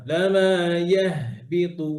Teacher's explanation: হায়ের আওয়াজ যেন আরো ক্লিয়ারলি পুরোটাই মুখ থেকে বের হয়, হায় বাতাস সহ, নাকে যেন না যায়, নাক যেন ফুলে না যায়, খেয়াল করেন।